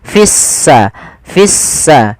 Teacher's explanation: Artinya lamnya dianggap tidak ada sehingga langsung diidgamkan ke huruf sin sehingga sin-nya berharakat tasdid. Seakan-akan s-nya dua. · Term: alif lam syamsiyah